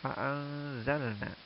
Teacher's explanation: nun berharokat sukun atau mati bertemu dengan zai. Maka kalimat ini juga dihukumi dengan ikhfa hakiki. Ya, maka cara bacanya samar-samar.